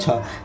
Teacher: छ बोलते हैं तो एक झटके से मुंह से वायु निकलती है और हाथ पे फील होती है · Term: महाप्राण